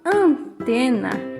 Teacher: Quando eu falo antena, esse AN, que é as letras A e N, elas produzem um som do AN como se ele tivesse com o sinal de nasalização, que é o TIL.